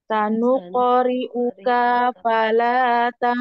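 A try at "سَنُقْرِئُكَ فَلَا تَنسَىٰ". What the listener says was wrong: Kayaknya jangan dipanjangin ya.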